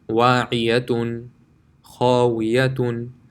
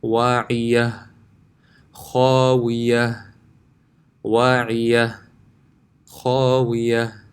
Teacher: If you stop on the long ta, it will remain a ta, but if you stop on a round ta, it will become a ha sakin